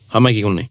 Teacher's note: haere mai or hara mai becomes hamai.